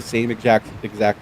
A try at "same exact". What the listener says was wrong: Did you just say same ejact?